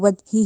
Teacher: कलकला का मतलब यानी हमने इसको जीम को हिलाना है, वज ही नहीं कहना, वज, ठीक है।